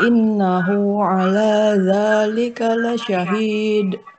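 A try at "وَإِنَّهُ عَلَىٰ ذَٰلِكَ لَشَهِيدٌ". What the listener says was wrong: Ya, jadi nanti apa bisa disempurnakan lagi nanti gunnahnya ya.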